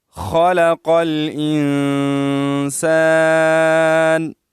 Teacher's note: خا کو ہم اپنی مخرج سے اور اچھی طرح ادا کریں گے، قاف کو بھی موٹا ادا کریں گے